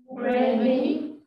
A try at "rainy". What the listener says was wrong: Đọc lại chữ đầu nhấn lên, chữ sau hạ xuống.